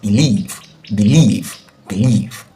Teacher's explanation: And according to the law, since it's disyllabic or two syllable verb, we have to expect that the stress should be in the second syllable, and the second syllable is leave.